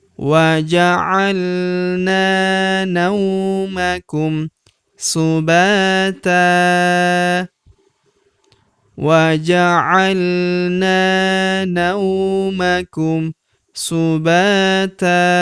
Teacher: Huruf ba kita panjangkan dua harakat karena terdapat tanda alif di depannya yang ini. Subata tanwin an menghilang kita rubah menjadi fathah. Lalu kita panjangkan dua harakat ya.